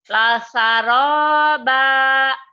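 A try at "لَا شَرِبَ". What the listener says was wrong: La shin. Oh iya hutang shin. La syaraba.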